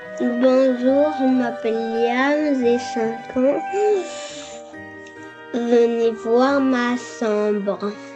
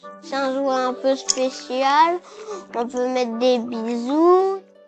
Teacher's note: sa langue se met entre ses dents pendant qu'il parle, ce qui génère ce zozotement. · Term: sigmatisme interdental